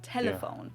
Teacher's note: a light L that is more pronounced with the tip of your tongue